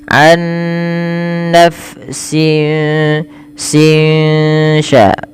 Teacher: Maksudnya adalah suara nunnya disamarkan kepada huruf setelahnya sehingga ya dia membaca antara izhar dengan idgham, yaitu tidak dimasukkan dan tidak diperjelas tapi di antara kedua-duanya. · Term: ikhfa hakiki